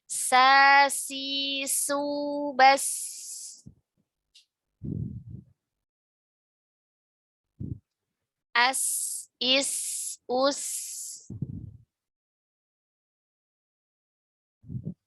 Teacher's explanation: Sin itu tipis ya. Dan bersih. Ada desis.